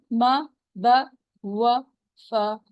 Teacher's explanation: اس میں و پہ آپ نے ہونٹوں کو بالکل گول کرنا ہے